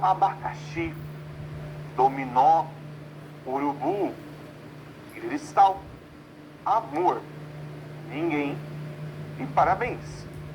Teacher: Perceba que todas essas palavras, a última sílaba é a tônica e por isso eu classifico como oxítonas.